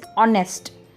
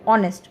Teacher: यहाँ पे H silent है। H साइलेंट होने की वजह से जो उस वर्ड का उच्चारण होता है वो स्वर से शुरू हो रहा है, यानी कि O से शुरू हो रहा है